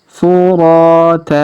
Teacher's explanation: Huruf ra kita panjangkan 2 harokat karena alif di depannya. Kemudian huruf ta tanwin an di ujung kita rubah menjadi fathah atau a dan kita panjangkan 2 harokat